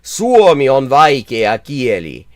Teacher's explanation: the stress tends to be on the very first syllable, and then it tends to be very even for the rest of it